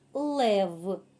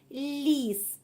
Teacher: звук л може вимовляти ствердно як у слові Лев а також може вимовлятись м'яко як у слові ліс